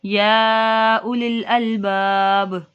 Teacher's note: اب یا میں یہ مد منفصل ہو رہا ہے، اس کو دو اڑائی الف کے برابر لمبا کریں گے